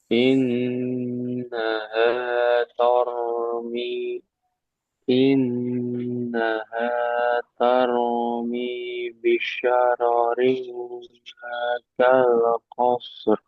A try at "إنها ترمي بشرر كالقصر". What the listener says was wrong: Ya, tadi hampir ya roknya taknya ke bawah tebal. Masya Allah sadar ya, sadar sendiri terus diubah ta tipis.